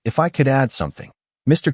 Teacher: notice the rising intonation on add something. It signals a request, not a demand. That little lift makes all the difference in politeness.